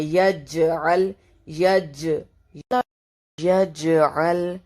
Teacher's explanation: جیم جو ہے وہ قلقلہ کا لیٹر ہے تو اس کے اوپر ساکن ہے، تو ہم نے یہاں پر بھی قلقلہ کرنا ہے